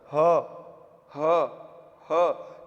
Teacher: जिव्हा कहीं टच हो रही है नहीं हो रही सीधा कंठ से निकल के आ रहा है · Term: कंठ वर्णों